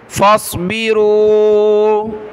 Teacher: فا صاد زبر فص صاد کو موٹا پڑھیں گے